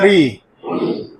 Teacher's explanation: जब री बोलेंगे आप तो जीभ जो है मूर्धा के पास जाके कंपन करता है। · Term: मूर्धन्य